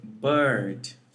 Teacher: The next phoneme is the long schwa, which is realized exactly like the short schwa, except it lasts longer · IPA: /ɜ:/